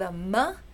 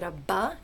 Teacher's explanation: you start with a ma and you make it a buck because that's the oral stop that's voiced and labial